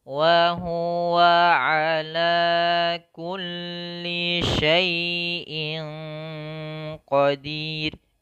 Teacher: membaca suara ain itu tidak terlalu dialirkan suaranya atau ditahan suaranya, tapi tengah-tengah. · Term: bainiyah